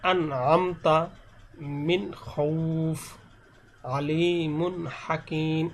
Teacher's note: যেমন এখানে এরকম ভাবে গুণ্য করা যাবে না, আন আমতা মিন খৌফ, আলিমুন হাকিম, এরকম আলিমুন, অর্থাৎ এখানে কোনো গুণ্য হবে না। স্পষ্ট বলতে এখানে গুণ্য হবে না, গুণ্য ছাড়া স্পষ্ট করে পড়তে হবে। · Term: ইজহার